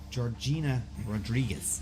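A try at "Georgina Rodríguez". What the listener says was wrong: Georgina Rodriguez. You have to roll the R's. Roll the R's.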